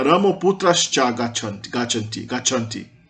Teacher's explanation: o final de Rama vira Ramo. Porque o A final mais consoante geralmente vira O.